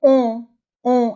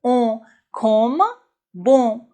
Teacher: on on on la bouche est ronde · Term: le son on